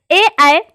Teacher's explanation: ए, ऐ कंठ, तालु और जीभ से बोले जाते हैं, इसे कंठ तालव्य कहा जाता है।